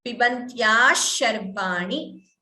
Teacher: ni is a hrasva. It is not a dirgha, so please do not prolong.